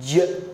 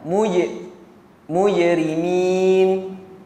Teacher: Jim bukan huruf hams. Bukan huruf hams. Hams ni huruf angin. Jim tidak ada angin.